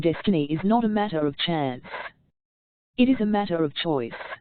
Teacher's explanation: Of course you will want to emphasize destiny, for it is the principal idea in your declaration, and you will put some emphasis on not, else your hearers may think you are affirming that destiny is a matter of chance. By all means you must emphasize chance, for it is one of the two big ideas in the statement. Another reason why chance takes emphasis is that it is contrasted with choice in the next sentence.